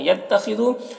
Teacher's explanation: خا کو پر پڑھیں گے، حروف مستعلیہ میں سے ہے